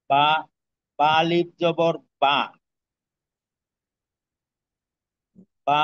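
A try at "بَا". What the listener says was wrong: টানতে হবে, একটু টান রাখতে হবে, এটা টানের পরিমাণ।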